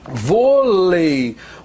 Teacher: Vôlei, vogal, semivogal, ditongo decrescente